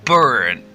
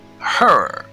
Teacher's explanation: Despite being spelled with different vowel letters, these words have the same R-colored vowel sound, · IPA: /ɝ/